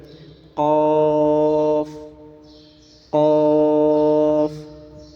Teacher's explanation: گلے سے آواز نکالیں، موٹا کر کے پڑھیں اور کھینچ کر پڑھنا ہے، قاف قاف۔ کاف کاف باریک پڑھنا ہے اور کھینچ کر پڑھنا ہے، کیف پڑھنا غلط ہے، کاف۔